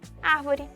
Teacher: e pode ser na antepenúltima sílaba como é o caso da palavra árvore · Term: proparoxítona